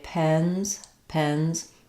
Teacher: the mouth is not very open for E when I say pens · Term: The Red Tent vowel, red tent vowel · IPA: ɛ